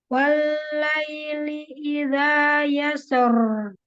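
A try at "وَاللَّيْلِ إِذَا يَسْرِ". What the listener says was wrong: Walla dibuka dan tipis. Kemudian fathah dibuka ya, yasra bukan yasr, bukan yasra, yasra. Tapi yasra dibuka ya-nya.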